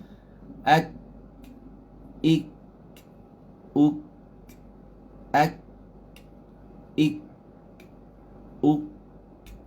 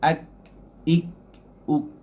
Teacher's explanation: Sebab dia syidah dia kuat. Syidah ni sifat kuat. Tahan. Suaranya kita hentakkan pada makhrajnya kuat. Lepas tu kita lepas.